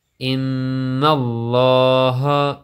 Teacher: لفظ اللہ کی لام کو موٹا کر کے پڑھیں گے، اس سے پہلے زیر ہوگی تو یہ بریک پڑھی جاتی ہے، ورنہ یہ ہر حالت میں پورا موٹی پڑھی جاتی ہے۔